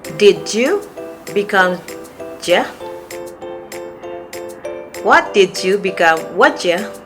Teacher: For number 5, there's a reduction of U sound after words that end with d or t sound.